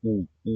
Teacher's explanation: तो गोल से आप खुद ही उच्चारण करके देखिए। उ आप करेंगे तो मुंह एकदम आगे हो जाएगा आपका और गोल गोल होगा · ऊ, आप करेंगे तो मुंह एकदम आगे हो जाएगा आपका और गोल गोल होगा। तो ऊ है, ऊ है, ऊ के बाद उसका बड़ा भाई ऊ, बड़ा भाई जो बड़ा ऊ हो गया, ऊन वाला ऊ, तो वो भी उसमें गोल बन रहा। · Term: गोलाकार